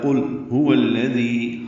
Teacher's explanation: ہے۔ قل هو الذی، ہاں اقصی حلق سے ادا کریں گے، وہ کو الذی کے لام سے ملائیں گے، ذال نرمی سے ادا ہوگا